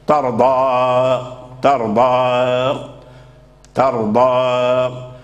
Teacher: فتعطيه شيئا من الترقيق في الضاد ولكن لا تخرجه عن حده المفخم المستعلي · يعني أن يكون فيه الترقيق، ثم تحافظ على استعلائه، والاستعلاء مفخم، فتجمع بين الإمالة المرققة وبين الاستعلاء المفخم ، فلا ترققه حتى مثلا يرجع حرفا آخر، ولا تتركه مفخما